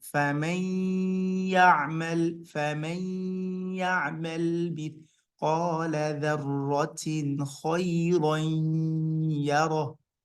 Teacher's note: we're making sure the nun is not clear and that the nun is inserted inside the ya. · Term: idgham